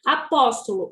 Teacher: o pós é o mais forte e o ó é acompanhado por acento agudo.